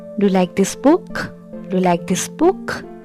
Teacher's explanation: the pitch of the voice rises at the end of the sentence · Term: rising intonation